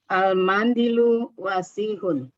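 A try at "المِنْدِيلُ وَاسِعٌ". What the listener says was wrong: Pelan-pelan. Ini al-mandilu atau al-mindilu yang betul? Al-mindilu wasihun. Wasihun pendek semuanya ya. Al-mindilu wasihun. Tanwin.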